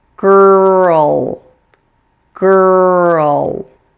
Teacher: the combination of the a followed by the L note that L is also a syllabic l meaning that it forms a syllable by itself